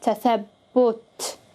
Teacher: I round my mouth for the ba, tathabbut, because it has a damma. Okay, and damma again means to round or to bring together.